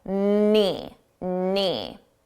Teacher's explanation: Notice the K is silent. You don't hear it at all.